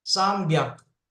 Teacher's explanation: Gets voiced. So hyaku becomes byaku.